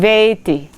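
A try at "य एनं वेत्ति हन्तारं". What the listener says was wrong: see how you rushed it?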